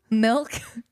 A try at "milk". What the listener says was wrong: You said milk. You said MELK. 100%.